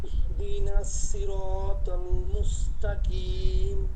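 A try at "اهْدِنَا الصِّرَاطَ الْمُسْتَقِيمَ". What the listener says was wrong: এটা হয় নাই। ইহদিনাস, এটা সদ, আর মুস এটা সিন। ইহদিনাস, ইহদিনাস সিরাতাল মুস্তাকিম। এটা মোটা করেন, সুইর, সুইর, সুই।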